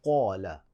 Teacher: قاف حروف مستعالیہ میں سے، موٹے حروف میں سے ہے، تو لہٰذا اس قاف کو موٹا پڑھیں گے